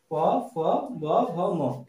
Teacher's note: এগুলি উচ্চারণ করার সময় দেখবে প্রথমে আমাদের শ্বাসবায়ুটা মুখে শ্বাস আসার পর ঠোঁট দুটি প্রথমে বন্ধ করে শ্বাসটাকে আটকে নেয়, আটকে নিয়ে অল্প খুলে তারপর এগুলি ঠোঁটের সাহায্যে উচ্চারিত হয়।